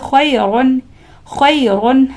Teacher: اس را کو پر پڑھنا ہوگا کیونکہ را کے اوپر دو پیش ہے، لہٰذا اس را کو ہم پر پڑھیں گے